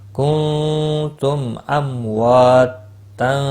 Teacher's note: تنوین کے بعد حروف اکفا کا فا ہے، اخفا حقیقی ہوگا، گناہ کے ساتھ پڑھیں گے۔